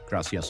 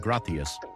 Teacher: Pronunciation, Spain, like a th sound for z and c